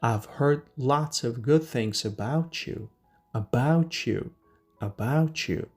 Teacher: when a word ends with a t sound and the next word starts with a y sound, in the middle we make a ch sound